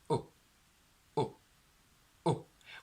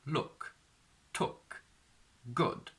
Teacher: back of your tongue goes up, and as a natural reaction, what happens is that your lips are curled and rounded forward. This sound is not pretty, it's a very brutal sound, and it's the sound oo, oo, oo, where you can clearly see that your lips are rounded. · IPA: /ʊ/